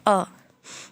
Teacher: मध्य स्वर का एग्जाम्पल क्या है आपका अ, जिसमें जिह्वा का मध्य भाग सक्रिय होता है उसे क्या कहते हैं, मध्य स्वर कहते हैं।